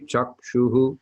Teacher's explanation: A C in transliterated Sanskrit is always a CH sound, cha. And a dot under an H at the end of a word, at the end of a line, indicates that you echo a short version of the vowel that precedes the H back. In this case, it'll be a U, as you can see in the third line.